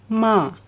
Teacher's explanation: When you pronounce MA, both the lips are closed